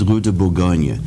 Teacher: But, for example, in the French Quarter, you have Burgundy Street, which is pronounced Burgundy Street, and I think there's a reason for that because in French it's Rue de Bourgogne. The accent's on the Gogne part